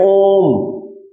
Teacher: यानी कि ओ को 3 मात्रा तक खींचेंगे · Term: प्लुत स्वर